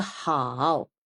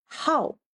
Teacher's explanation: the word 好 can be the third tone and it can be the fourth tone.